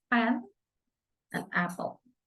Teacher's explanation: The manner of articulation is plosive, occur when the contact closure is made somewhere in the vocal tract. Place of articulation is labial, formed with the two lips. P. The example is pen and apple.